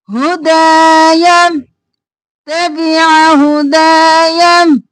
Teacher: دا کو کھینچیں گے، الف مدہ ہے،